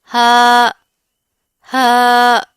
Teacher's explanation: हलक का वो हिस्सा जो सीने के करीब होता है वहां से हा का इखराज होता है।